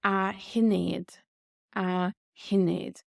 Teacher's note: the S here just becomes silent